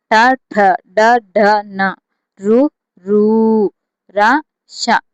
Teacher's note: శిరస్సు నుండి పుట్టినవి మూర్ధన్యాలు